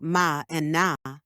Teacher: Nasals. These are made by blocking the airflow in the mouth but letting air escape through the nose